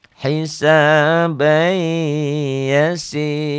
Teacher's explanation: Si-nya mad tabi'i, kasrah dengan ya mati.